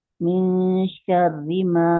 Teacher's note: यहाँ पे बारीक इख्फा आ गया, नून साकिन के बाद शीन आ गया ना, बारीक इख्फा है, यानी जबान की जड़ आपकी नीचे रहेगी